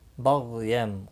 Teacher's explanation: غین مستعلیہ ہے، پور پڑا جائے گا۔